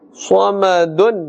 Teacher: Sad is part of the huruf musta'aliyah, recited with a full mouth.